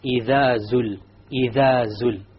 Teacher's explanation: The dhal, my tongue is outside. إِذَا. And then when I get to zul, the tongue goes inside.